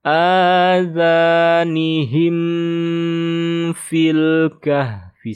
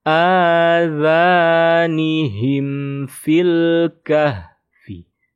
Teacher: Mim sukun bertemu fa. Ini izhar syafawi ya. Jadi tidak ada dengung, tidak ada gunnah ya.